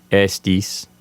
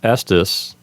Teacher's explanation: If you're using ecclesiastical pronunciation, you might lengthen those vowels to sound something more like estis.